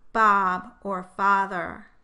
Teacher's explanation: the A sound as in Bob is produced with the lips not rounded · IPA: ɑ